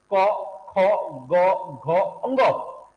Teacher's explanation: वर्तमान में हम लोग इसका उच्चारण कंठ से नहीं करके कंठ के थोड़ा सा ऊपर से करते हैं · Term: कोमल तालू